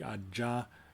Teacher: if it's voiced like Aja it does have a voice bar